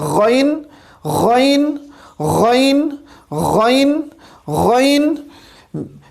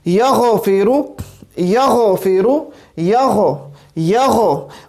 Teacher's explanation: اب یہاں پہ غین آ رہا ہے, یہاں پہ غین آ رہا ہے اور غین ہمیں پتہ ہے کہ حلق کے ابتدائی حصے سے یعنی ادنا حلق سے ادا ہوتا ہے. جب آپ غین پڑھیں گے آپ خود محسوس کریں گے کہ یہ حلق کے بالکل ابتدائی حصے سے ادا ہو رہا ہے